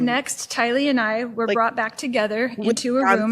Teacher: Midwestern like Wisconsin sort of accent, but it's cut short. The mouth isn't moving as much. The tongue isn't doing as much work. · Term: Wisconsin accent